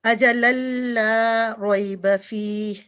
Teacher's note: It should be 2 second because it's Alif Mad.